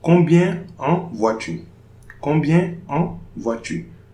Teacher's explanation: No liaison between the N and en.